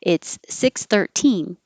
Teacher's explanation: if it's time then you do stress the teen